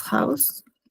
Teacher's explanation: cuando está al comienzo de una palabra se pronuncia como una J, pero una J suave. Eh, por ejemplo, das House en la casa.